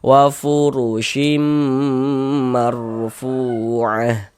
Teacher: Nah, sehingga ini kita baca wa furushim, jangan dibaca shin gitu, jangan, tapi shim. Nah, kemudian di bagian shimnya itu didengungkan, digunnahkan. Jadi suaranya itu kita tahan ya sepanjang 2 harokat